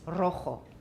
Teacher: A trill is written with a double R, and also if a word starts with a single R in Spanish, that is also a trill